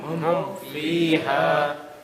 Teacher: There's no hiding here. The hiding is only with the ba. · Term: Clear